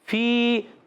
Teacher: یا ساکن سے پہلے زیر، یا مدہ، ایک الف کھینچ کر ادا کریں گے